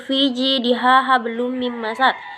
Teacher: Qalqalah kubra artinya qalqalah besar yang dibaca hurufnya dengan pantulan kuat. Qalqalah kubra terjadi ketika 5 huruf qalqalah tadi berada di akhir kalimat.